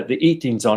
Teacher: this dropping of the H would be um one of the variations that is quite frequent